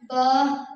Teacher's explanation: दोनों होंठों के अंदरूनी तली वाले हिस्से को मिलाने से अदा होता है